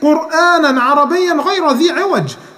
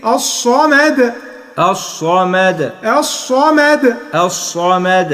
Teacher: ما تقولش الصمد بالضاد، لا، نقولها بالدال